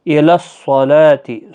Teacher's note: صاد حروف مستعلیہ ہے، پر پڑھنا ہے، لام کے اوپر کھڑا زبر ہے، 1 الف کی مقدار کے برابر کھینچ کر پڑھیں گے۔